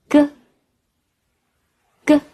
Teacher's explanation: 下面我们学习▁g、k、h▁3个声母的发音。发▁g▁音时， 舌根顶住软腭，然后突然放开，透出的气流很微弱